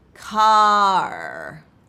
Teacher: Try extending the ah sound and then adding the R coloring at the end.